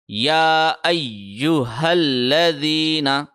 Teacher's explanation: لام کے اوپر تشدید ہے، اس کے اوپر آدھے سیکنڈ کے لیے ہم ٹھہریں گے۔ جب ہا کو لام سے ملانا ہے تو آدھے سیکنڈ کے لیے ٹھہریں گے، چونکہ لام پہ تشدید تھی۔